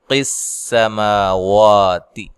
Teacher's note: قاف کو موٹا ادا کرنا ہے، سین کو باریک سیٹی سے ادا کرنا ہے۔ ما مد اصلی ہے، وا مد اصلی ہے، تا کو باریک پڑھنا ہے۔